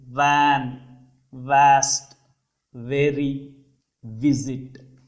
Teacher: అంటే ఈ పదాన్ని, ఈ అక్షరాన్ని పలికేటప్పుడు లాబియోడెంటల్ అంటే లిప్పు పంటి పై భాగం వచ్చి కింద లిప్కి తగులుతుందండి. అంటే వ్యాన్ అని పలికేటప్పుడు upper teeth touches the lower lip. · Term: వి షేప్డ్ వా సౌండ్